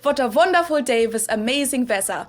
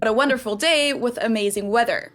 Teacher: many Germans still struggle with it, and therefore just use the German W sound, which is the same as the English V sound. So it's V.